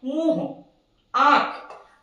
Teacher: जब हम लोग इनका उच्चारण करेंगे तो देखेंगे कि हमारा मुंह और नाक दोनों की सहायता से इनका उच्चारण होता है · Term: अनुनासिक